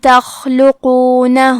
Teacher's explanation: خاء کی ادائیگی حلق کے اوپر والے حصے سے ہے. خاء حروف التفخیم میں سے ہے، تو ہم یہ حرف کو موٹی آواز میں پڑھیں گے.